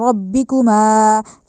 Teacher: الائی ربکما، اب ربی کا جو را ہے اس کو موٹا کر کے پڑھنا ہے، ربی نہیں کہنا، ربکما نہیں کہنا، ما کہنا ہے. میم کو لمبا کیا جائے گا کیونکہ اس کے بعد الف آ رہا ہے، ٹھیک ہے، الف مدہ بن رہا ہے.